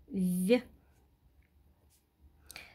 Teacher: этот звук согласный звонкий у него есть пара по звонкости-глухости значит он парный в этом слове этот звук мягкий другой может